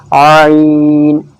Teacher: عین حلق سے نکلے گا، حلق کی طرف سے، حلق کے بیچ سے